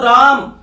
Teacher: मैंने रा को क्या कर दिया, लंबा खींच दिया। थोड़ा जितना उसका समय था उससे ज्यादा समय उच्चारण में लगा दिया, तो फिर वहां पर कौन से स्वर का प्रयोग हो गया, प्लुत स्वर का प्रयोग हो गया।